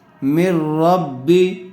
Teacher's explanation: تنوین یا نون ساکن کے بعد، نون ساکن کے بعد را آئی ہوئی ہے، اس لیے بغیر غننے کے ملا کر پڑھیں گے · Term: ادغام را